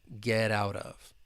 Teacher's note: And we can actually link this whole phrase together. And the final T in get and out with the American accent, it's going to be a flap T. Get out of.